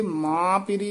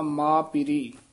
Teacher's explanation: ਹੈ ਨਾ ਇਹ ਸੰਬੰਧਕ ਪਾਠ ਹੈ ਇਥੇ ਮਾਂ ਪੀਰੀ ਨਹੀਂ ਕਹਿਣਾ ਬਿੰਦੀ ਤੋਂ ਰਹਿਤ ਨਾਸਕੀ ਉਚਾਰਨ ਤੋਂ ਰਹਿਤ ਬੋਲਣਾ